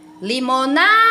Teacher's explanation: Então, perceba que o na é uma sílaba tônica. E essa sílaba prolongada, demorada, sempre será a sílaba tônica.